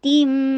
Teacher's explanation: اور میم کے ساتھ ملانا، نہیں تم نہیں ہوگا، تی بولیے، تی کو بول کے اور پھر میم کے ساتھ ملا کر 2 حرکہ غنہ کیجیے